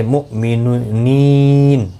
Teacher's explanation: حمزہ ساکن کو جھٹکے کے ساتھ پڑھیں گے، نی یا مدہ ہے، اور وقف کی صورت میں نون ساکن پڑھا جائے گا، وقف بالاسکان ہوگا، مد العارض وقفی ہوگا، 3 سے 5 الف کی مقدار کے برابر کھینچ کر وقف کیا جائے گا۔